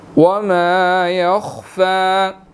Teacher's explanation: خا موٹا ہے اور فا کے اوپر کھڑی زبر ہے, اس کو ہم نے 1 سیکنڈ کھینچ کر پڑھنا ہے